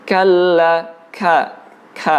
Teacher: Huruf kaf itu mengandung unsur udara yang keluar, ya. Ada angin yang terhembus ketika mengucapkan huruf kaf.